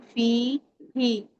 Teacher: या मद्दा है तो इसको फ को या से मिलाएंगे टू काउंट